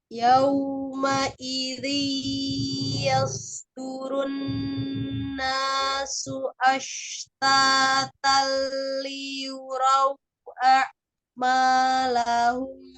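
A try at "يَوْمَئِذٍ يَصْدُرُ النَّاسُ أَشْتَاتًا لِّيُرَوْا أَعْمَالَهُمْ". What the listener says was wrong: Iya, ahsan awal insyaallah. Latihan lagi nanti sudah lebih baik dari yang awalan ya.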